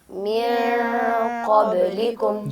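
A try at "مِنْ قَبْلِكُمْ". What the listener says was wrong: जी, यहाँ पे नून को ज़ाहिर करके नहीं पढ़ सकते। मिन क़ब्लिकुम ये गलत और रॉन्ग तरीका है अदायगी का, जबकि आप इख्फ़ा करके पढ़ेंगे।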